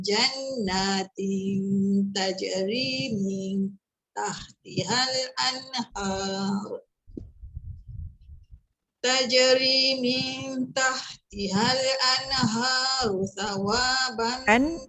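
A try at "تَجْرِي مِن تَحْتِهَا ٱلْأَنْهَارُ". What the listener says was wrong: Yang an tu tekan dulu. Dia macam terangkat dulu. Anha. Dia anha. Sebut betul-betul an. Walaupun dia izhar. Izhar ni sebenarnya dia ada dengung. Tapi dengung yang semula jadi. Cuma kita tak boleh lama lah ya. Tahtihal anha. Anha.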